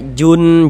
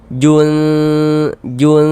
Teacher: Bunyi nun sukunnya kita baca samar. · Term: ikhfa hakiki